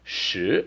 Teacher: it is the second tone, so it's a rising tone